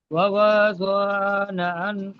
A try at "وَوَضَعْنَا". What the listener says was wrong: ওয়া ওয়াদা'না, এখানে দেখেন, ওয়া ওয়াদা'না, আইন জাবার জ, এখানে টান হবে না, আইনটা সাকিন হয়ে উচ্চারণ হবে জোয়াদের সাথে। ওয়া ওয়া জ না